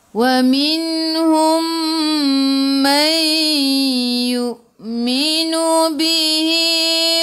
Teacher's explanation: Hum mim bertemu dengan mim idgham mithlain masuk ke dalam mim yang kedua dan dengung dua harakat